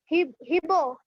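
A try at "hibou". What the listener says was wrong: Hibo nahi hoga. In French, H is there, but we do not pronounce H. We go for the next vowel. So Ibu.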